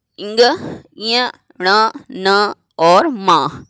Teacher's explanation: तो इनका जो उच्चारण स्थान है वह है नासिक, अर्थात नाक से। इसलिए इन वर्ग का नाम है नासिक।